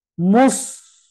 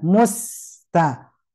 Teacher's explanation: Nah, kadang kalau menyebut sin yang matinya jelas tapi kadang terpengaruh oleh monyongnya bibir kita yang terus ditahan kemudian mempengaruhi bunyi sin tipis menjadi tebal gitu